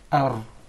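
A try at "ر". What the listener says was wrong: Did you notice anything? What did he just do? There is a repetition of the ra. He actually pronounced several ra's. We just want one ra. Ar.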